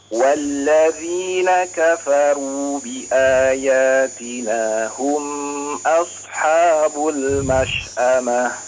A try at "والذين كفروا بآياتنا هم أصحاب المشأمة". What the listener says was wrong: Hum enggak ya. Di sini izhar ya, diizharkan langsung. Walladzina kafaru bi ayatina hum asha. Hum asha ya. Jangan digunakan terlalu panjang hum ya.